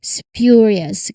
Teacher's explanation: This one is less in common but you know it's important to recognize it involves the uh letter s then p which is unaspirated here followed by the y sound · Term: SPJ cluster